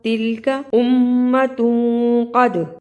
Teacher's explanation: تلکا لمبا نہیں کرنا، تلک امۃ قد، اخفا، قاف کو موٹا پڑھنا، دال پہ قلقلہ کرنا